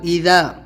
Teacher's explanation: بعثرا اس میں آپ کو ذال کا دھیان دینا ہے کہ ذال بولنا ہے، زبان کی نوک دونوں دانتوں کے بیچ میں رکھ کے ذال